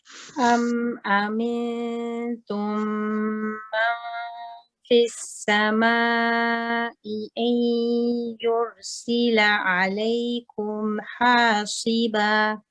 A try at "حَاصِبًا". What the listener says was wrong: The صاد حَاصِبًا. Okay, so your ikhfa here is still a bit heavy.